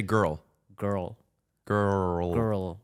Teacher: the r is back the L is to the front